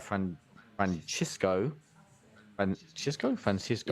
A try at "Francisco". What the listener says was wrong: You can say Francisco. Don't have to pronounce the C.